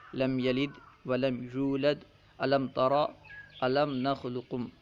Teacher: میم ساکن کے بعد حرف با یا میم نہیں ہے، اس لیے ان میں اظہار شفوی ہوگا، گنہ وغیرہ اس میں نہیں کریں گے